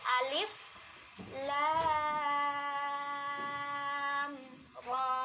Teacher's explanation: Sekali lagi ya, lamnya 6, ro-nya 2.